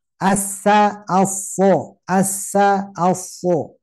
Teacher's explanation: jadi tebalnya karena pangkal lidah